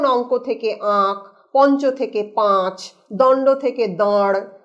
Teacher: তার যে আগের স্বরধ্বনি বা পূর্ববর্তী স্বরধ্বনি অনুনাসিক হয়ে যায় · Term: ন্যাজালাইজেশন